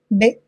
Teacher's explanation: La prononciation de la consonne B est bilabiale. La bouche, au moment de la prononciation, doit être fermée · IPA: /b/